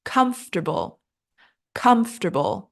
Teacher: Stress on first syllable